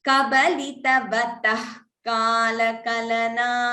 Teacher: So instead of the Jihva Muliya, I'm hearing it as tha. It is not tha. It is not Mahaprana tha.